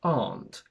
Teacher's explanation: In British English, we pronounce it as aren't, where the R is completely silent.